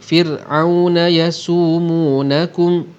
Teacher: mim mati ini kita tidak akan dengungkan kerana ia izhar syafawi. Bahkan kalau kita lihat atas mim ni ada tanda mati.